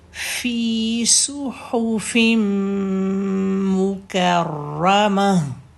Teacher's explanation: فی کی حرکت 2 اور سو صاد کی پیش اور صاد ہیوی بھی ہے